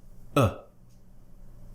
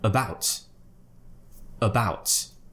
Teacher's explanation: all we do is open the mouth in a very relaxed way like this tongue in the middle of the mouth not really doing anything just forget about your tongue it should be just relaxed in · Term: schwa sound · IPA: /ə/